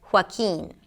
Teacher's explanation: So you start with an H sound - 'huwaa', 'huwaa', close your lips, and then open it up for a W sound - 'huwaa'. And then 'keen': a K sound, a high E, and an N